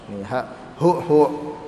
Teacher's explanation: Dan kata muallif rahimahullah, asluha hu, asalnya itu pakai ha, ya, ha yang di bawah tenggorokan makhrajnya. Ha, hu, bukan menggunakan hamzah.